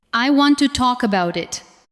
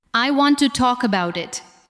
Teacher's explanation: Listen to how to and the first part of about become lighter.